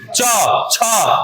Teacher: च छ का जो उच्चारण स्थान है कंठ के बाद आता है तालू · च छ जो आपका जीभ जाके तालु में कट मारेगा